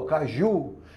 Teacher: Caju é oxítona, termina em U. A sílaba tônica é no U